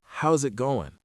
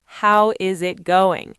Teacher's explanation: he reduced, Is it? and connected it all together